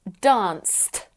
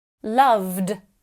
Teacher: we say danced with a T at the end, loved with a D at the end, and visited with an id at the end